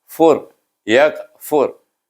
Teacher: Jadi bunyi fa itu suku katanya fu, tetapi dia digabungkan dengan ra. Baca ra dengan tebal bunyinya fur